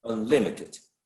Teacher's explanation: you would never stress un, and as several of you mentioned, the stress should go on the second syllable